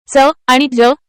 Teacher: च आणि ज ही व्यंजने तालव्य आहेत आणि त्यांचा उच्चार करताना हवा कमी प्रमाणात बाहेर पडते म्हणून ती अल्पप्राण आहेत.